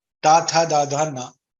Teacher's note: So the origin of the place of tavarga and lakara sakara is danta.